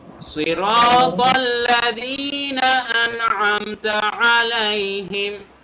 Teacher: তারপরে সিরাতাল্লাযীনা আন'আমতা আলাইহিম, দুইটা জিনিস খেয়াল রাখবো। আন'আমতা আইন গলার ভেতর থেকে, তারপরে আবার আলাইহিম এখানে আইন গলার ভেতর থেকে।